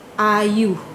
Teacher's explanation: Vokal depan luas ini contohnya yang hadir dalam perkataan ayu. Yang dibunyikan sebagai A dan contohnya hadir dalam perkataan ayu.